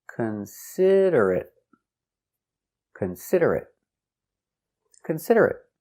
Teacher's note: 4 syllables. The stress is on the second syllable.